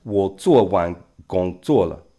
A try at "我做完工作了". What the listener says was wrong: Yeah, that one is more second tone. You said a little bit like third tone. 做完工作了. 我做完工作了.